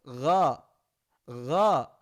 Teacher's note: Kalau go dia agak sedikit ke bawah, dekat dengan huruf ain, makanya lebih lembut. Gho, gho. Kemudian naik ke atas, kho.